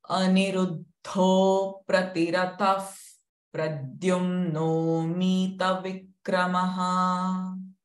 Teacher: the visarga sound is F because it is followed by pr sound